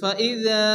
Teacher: এখানে আলিফ মাদ্দা আছে এক আলিফ পরিমাণ টান দিয়ে পড়তে হবে